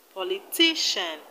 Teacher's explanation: All of them have their stress on the second syllable from the end. In politician, we have the stress on TI.